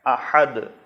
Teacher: احد میں ہا ہے، حلوے والی ہا جو حلق کے وسط سے درمیان سے ادا ہوگی